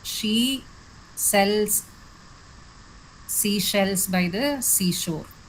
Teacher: when you say the sound, there's a soft whispering or a hissing effect in the speech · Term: sibilance